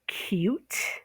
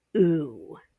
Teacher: There's the U with the Y in front of it, like cute, okay? And the long U without the Y sound, which would be ooh, okay?